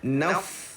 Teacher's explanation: Ingat fa dan ta adalah sifat dia sama, iaitu ada sifat hamas pada fa dan ada sifat hamas pada ta, iaitu mengalir kita punya nafas ketika mana dia mati tu sangat-sangat menonjol